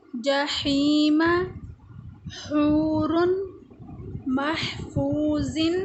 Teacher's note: ہا بھی ادا ہوتا ہے حلق کے درمیانی حصے سے